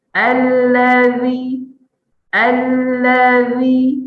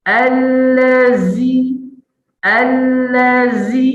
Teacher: Allazi, zi, tu zai. Huruf zal dia tak ada desir.